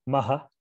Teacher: followed by a visarga a distinct hard aspiration